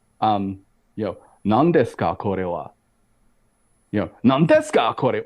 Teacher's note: it's a fairly flat flat intonation of these words, but each syllable is like is it's meant to be held for the same amount of time